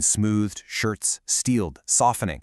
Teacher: you've got the sibilants, the repeated, breathy S sounds in smoothed, shirts, steeled, softening